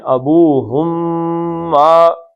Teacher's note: ابوہم کا میم اور ما کانا، یہ دونوں آپس میں مل گئے